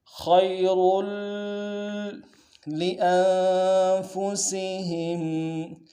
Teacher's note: را کی تنوین کو آگے لام کے ساتھ ملانا ہے، غنہ ادا کرتے ہوئے، لام کے اوپر تشدید زور دیں گے